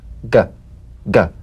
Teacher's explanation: You'll feel a crisp tap and a voiced pulsation of the back of the tongue.